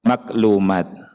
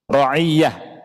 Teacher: Jadi ain banyak yang diubah jadi kaf dalam bahasa Indonesia.